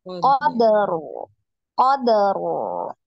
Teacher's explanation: Qad ya, disempurnakan qalqalahnya ya. Qadaru. Qadaru ya, baru disukunkan ro-nya.